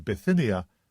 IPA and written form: bɪˈθɪ.ni.ə (Bithynia)